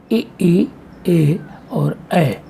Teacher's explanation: इन स्वरों के उच्चारण में जिह्वा का अग्रभाग इतना उठ जाता है कि उससे और ऊपर उठने पर इनका उच्चारण नहीं हो सकता। जिह्वा के अग्रभाग की क्रियाशीलता से उच्चरित होने के कारण इन्हें अग्रस्वर कहा जाता है।